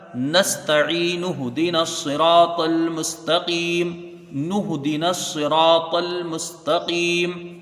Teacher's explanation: مد نہیں ہوگا، یہاں پر صرف مد اصلی رہ جائے گا، اور یہ نون کے اوپر جو پیش ہے یہ ہاں میں ملے گا، یہ حمزہ وصلی گر جائے گا